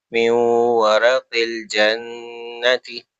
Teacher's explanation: نون ساکن کے بعد لیٹر واو ہے یرملون میں سے، تو ادغام کا رول ہوگا، میو غنہ کریں گے